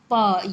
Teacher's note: अब आता है प वर्ग। प, ये आपका होठ, ओठ से स्पर्श करेगा, आपको छुएगा